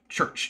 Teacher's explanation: It's a t followed by a sh sound.